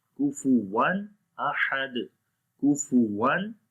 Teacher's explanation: we do not make any nasal sound · Like we are making the clear sound of noon. We are not making gunna. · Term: izhar